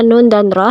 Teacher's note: ujung lidah tempelkan ke gusi atas